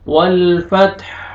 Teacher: वक्फ की सूरत में हा साकिन हो जाएगा, वल फतह, हा का साउंड आएगा, वल फतह।